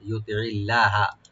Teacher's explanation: আইনটাকে অবশ্যই রাইট দিবেন যেন গলার মাঝখান থেকে আসে · লফজ জালাল এখানে আমরা লাইট করে পড়বো